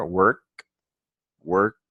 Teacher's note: Cuando decimos work, el sonido de la K es un sonido sordo, ¿sí? Es decir, el sonido nunca va a vibrar.